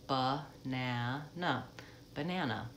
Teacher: banana we have three letter a is in that word but we only say that AA vowel out in the middle syllable that's the stress syllable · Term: schwa